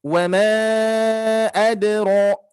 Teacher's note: Kalau diwasalkan berarti menjadi 4 harokat atau sampai 5 harokat. Dibaca panjang ya, hati-hati. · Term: mad jaiz munfasil